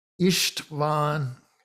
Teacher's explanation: S by itself appears in his first name, and so it's pronounced as a sh, István. So there it's S is not pronounced as S in English, but it's as a sh, as if it were an SH.